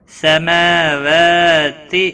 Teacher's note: میم اور واو دونوں کے اوپر کھڑی زبر ہے، ایک ایک الف کے برابر کھینچ کر پڑھیں گے